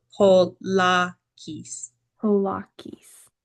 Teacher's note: So the alpha will be more of a long like ah sound.